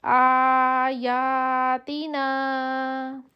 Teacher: آ اور یا کو ایک ہی جتنا لمبا کریں گے، آگے تی پہ سمپل زیر ہے، نا کو پھر ہم اسی جتنا لمبا کریں گے.